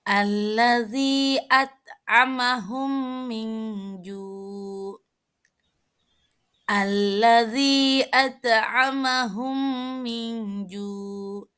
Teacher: Apabila mim sukun bertemu dengan mim, maka cara membacanya dengan memasukkan huruf mim ke dalam huruf mim disertai dengung 2 harokat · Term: idgham mutamasilain